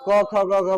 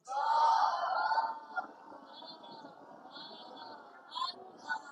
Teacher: अनुभव हो रहा है कि यह किससे बोला जा रहा है, कंठ से बोला